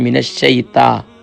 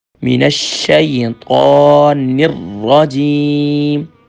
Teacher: تا نہیں ہے طا ہے، طا موٹا ہوگا